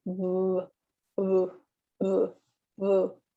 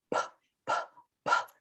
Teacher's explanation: the B sound, we're putting our 2 lips together and also our voice box is engaged. So you will feel a vibration in your throat.